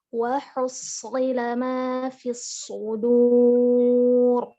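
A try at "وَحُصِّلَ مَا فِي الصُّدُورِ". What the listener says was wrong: Dalnya tempelkan ke pangkal gigi seri. Kayak orang cadel, sudu, du. Dada. Untuk harokat dhammahnya sempurnakan lagi ke pangkal gigi seri. Dudu.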